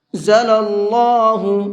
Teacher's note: اللہ کے لام کو منہ بھر کے پڑھیں گے اس لیے کہ اللہ کے لام سے پہلے زبر ہے